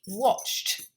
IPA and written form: wɒʧt (watched)